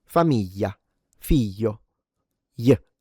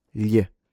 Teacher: people in the south tend to uh reduce it or simplify the sound and basically pronounce it like a Y.